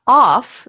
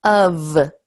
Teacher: It's of. So even though we write F, it's actually a V sound.